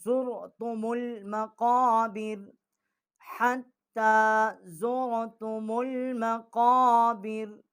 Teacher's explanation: یہ منہ پر کر کے موٹی آواز کر کے پڑھیں گے۔ کوے کے متصل جب زبان جو ہے اوپر والے تالو سے ٹکرائے گی تو وہاں سے یہ اس کا مخرج جو ہے قاف کا ہے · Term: بڑا قاف